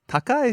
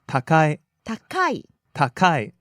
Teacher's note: takai starts low, high, down.